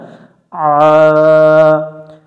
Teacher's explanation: আইন অক্ষরটা একটু গলা চেপে উচ্চারণ করবো আমরা